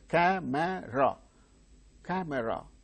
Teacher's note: three syllables are there the initial syllable gains stress that is it is uttered with greater force